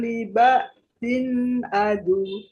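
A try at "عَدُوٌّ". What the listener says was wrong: Ditekan lagi, Bu. Kayak orang kaget. Ditekan seperti itu.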